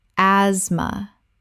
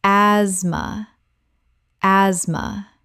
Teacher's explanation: The TH is completely silent. This is a 2-syllable word.